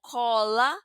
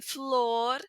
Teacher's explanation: puede ser una o abierta como cola, una o cerrada como en flor y una o que suena un poquito como u en ov.